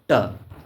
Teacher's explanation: मूर्धन्य अल्प प्राण अघोष व्यंजन वर्ण का उदाहरण है